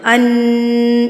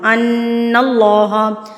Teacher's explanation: اب آگے چلتے ہیں، وَأَنَّ اللَّهَ، ان نون کے اوپر جب تشدید آتی ہے نا تو یہ غنہ کر کے پڑھا جاتا ہے، یعنی کہ ناک میں آواز آتی ہے، ان، یہ جو ہمنگ ساؤنڈ ہے، ان اللہ لا یضیع، یضیع۔